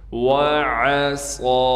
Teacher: عین کو صاف کر کے گلے سے نکالیں گے، صاد کو موٹا بھی کرنا ہے، صاد میں سیٹی بھی نکالنی ہے اور صاد پر کڑا زبر ہونے کی وجہ سے صاد کو 1 الف کی مقدار کھینچیں گے، یہ یا نہیں پڑھی جائے گی۔